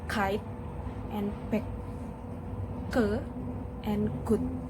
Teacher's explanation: Block airflow with the back of the tongue against the soft palate in the velar.